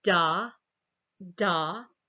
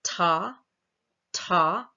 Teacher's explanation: that D right is a voiced alveolar stop it's voiced and the voicing is starting at about 17 milliseconds when you say tah tah that T is a voiceless alveolar stop and the voicing doesn't start until about 91 milliseconds as we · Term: voice onset time